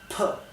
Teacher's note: es una p más explosiva y más dura que la del español